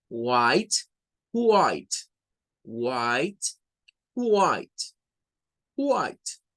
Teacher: Entonces hacen como que tomaran aire al principio para decir white